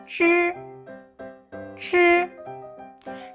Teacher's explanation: a sound formed by the tip of the tongue and the front of hard palate. You also can call it a retroflex consonant, which means when you saw all of them, you're gonna ready to rolling back of your tongue.